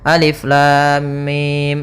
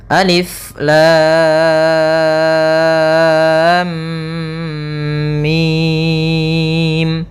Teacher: Panjangnya adalah 6 harakat. Cara membacanya adalah kita panjangkan dulu lamnya, baru dimasukkan ke mimnya. · Harusnya lamnya kita panjangkan 6 harakat dulu, baru ditahan mimnya sebanyak 2 harakat, karena di sini ada mim ketemu mim, kemudian baru mim. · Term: mad lazim harfi mutsaqqal